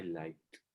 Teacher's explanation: In the case of the like, the K sound comes before the E. So the D sounds like a T.